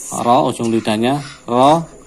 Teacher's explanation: Huruf ro, makhrajnya ini ujung lidah dari arah punggung dengan gusi. Jadi untuk huruf ro, tempelkan di gusi gigi seri atas.